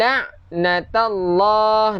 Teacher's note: nama Allah lafzul jalalah, panjangkan 2 harakat pada lafzul jalalah.